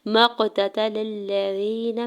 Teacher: میم کے زبر کو قاف ساکن کے ساتھ ملاتے ہوئے قلقلہ کرنا ہے ، قاف ساکن پہ تا کے زبر کو بغیر کھینچے ہوئے